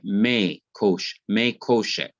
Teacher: when you put min before koshek, you find that the N disappears, but because the keth in the noun koshek cannot be doubled, what has to be done is to lengthen the short hirik, the I under M, to the long vowel sire.